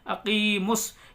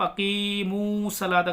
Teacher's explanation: یہ واو مدہ نہیں ہے، اس کو کھینچیں گے نہیں، کہیں آپ اقیمو صلاۃ غلط پڑھنے لگ جائے.